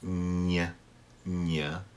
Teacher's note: Your tongue has to stay up on the roof of your mouth.